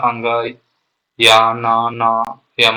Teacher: नासिक व्यंजन में क्या होता है, जैसे हम लोग अंग, या, ना, ना या मा बोलते हैं, इनका उच्चारण नासिका के साथ क्रमशः कंठ, तालु, मूर्धा, दांत तथा ओष्ठ के स्पर्श से होता है, अतः इन्हें नासिक व्यंजन कहते हैं।